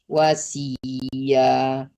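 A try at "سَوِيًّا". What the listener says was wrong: Sawi kebalik. Sawi ya, bukan wasi. Sawi ya.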